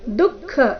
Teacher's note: ದುಃಖ ಇಲ್ಲಿ ಖ ಮಹಾಪ್ರಾಣ ರಸ್ವ ಗಡಿಬಿಡಿಯಲ್ಲಿ ದುಃಖ ಅಂತ ಹೇಳಬಾರದು ದುಃಖ ಇದೆ ದು ಮೊದಲು ಅಲ್ಪಪ್ರಾಣ ನಂತರ ಖ ಮಹಾಪ್ರಾಣ ಬರಬೇಕು